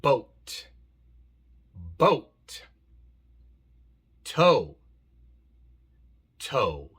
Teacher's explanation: Muy importante que la pronuncien correctamente como diptongo. O y no como la O en español.